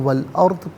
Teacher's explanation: را ساکن ما قبل حمزہ پر زبر، را ساکن کو پر کر کے پڑھیں گے۔